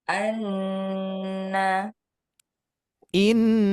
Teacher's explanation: perbedaannya di tasdid maka yang bertasdid itu lebih lama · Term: Nun tasdid